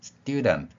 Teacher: 영어의 경우에는 S 뒤의 t 소리가 쌍디귿 소리가납니다